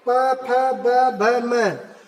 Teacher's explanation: और प वर्ग में देखिए प फ ब भ म, आपको इस पांचों शब्द को बोलने में आपके दोनों ओठ टच हो रहे हैं।